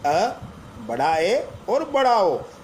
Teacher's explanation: ये वो स्वर है जिनके उच्चारण में हमारा मुंह जो है वो आधा खुला रहता है। इन्हें अर्ध विवृत स्वर कहते हैं।